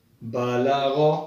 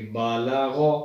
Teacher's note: غین کو حروف مستعلیہ میں چونکہ شامل ہے، اس کو موٹا یعنی پر کر کے پڑھیں گے